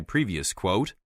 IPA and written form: ˈpriːviəs kwəʊt (previous quote)